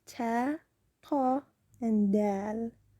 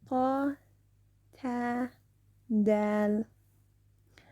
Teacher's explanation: these originate when the tip of the tongue touches the gums of the upper two front teeth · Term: gentle letters